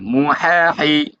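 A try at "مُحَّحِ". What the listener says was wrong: মু বলতে পেশ হবে না, তাহলে পেশ হলে দুই ঠোঁট গোল হবে না, বলছিলাম ঠোঁটটি বাইং মাছের মতো চুক্কা হবে, তাহলে তো চুক্কা হচ্ছে না।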